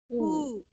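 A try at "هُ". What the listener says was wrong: Not who. Make it more deeper.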